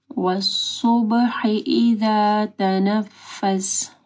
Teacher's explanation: صوت کو موٹا پڑھنا ہے، با کے اوپر کلکلہ ہوگا